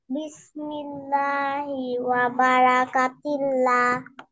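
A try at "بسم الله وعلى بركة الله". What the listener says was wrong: ওয়ালা, বাদ পড়ে গেছে। ওয়ালা বারাকাতিল্লাহ। বলেন, বলেন।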